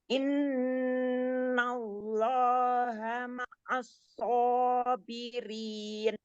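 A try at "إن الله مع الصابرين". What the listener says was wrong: Lamnya kan tadi katanya tebal, jadi ditebalkan ya.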